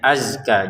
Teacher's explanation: Azkanya huruf Z-nya jangan dipantulkan ya, azka. Jadi jangan dibaca azka, azka seperti itu ya, nggak boleh.